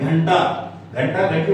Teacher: घंटी वाजल्यासारखा खणखण आवाज होतो नाकातून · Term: अनुस्वार